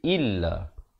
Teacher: Yakh ruju illa, illa bukan illa tapi illa. Hamzah baris bawah bunyi i, bukannya bunyi e.